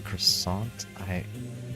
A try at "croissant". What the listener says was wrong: Croissant? It's croissant. You can't pronounce the T, that's the main part. But you can, the R doesn't matter because, you know, you can be croissant.